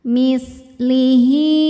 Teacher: Maka cara bacanya huruf H panjang seperti mad jaiz. Boleh 4, boleh 5 harokat. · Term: mad silah tawilah